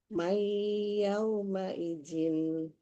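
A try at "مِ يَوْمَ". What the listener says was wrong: Mi, bukan Mai. Mi.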